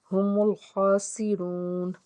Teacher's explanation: خا کے اوپر کھڑا زبر ایک الف کے برابر کھینچ کے ادا کریں گے۔ واو ساکن سے پیچھے پیش ایک الف کے برابر کھینچ کے ادا کریں گے۔